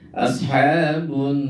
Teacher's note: lamnya itu tidak dibacakan ya hilang sama sekali yang nampak adalah huruf nunnya dan dibaca gunah dengung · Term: alif lam asyamsiyah, gunnah